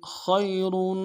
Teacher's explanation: من عند اللہ خیر خا کو یا کے ساتھ ملانا ہے، خا موٹا کرتے ہیں یا کے ساتھ ملائیں گے، یا لین بغیر کھینچے پڑیں گے، را کو موٹا کریں گے، را کے اوپر تنوین ہے، غنہ کریں گے۔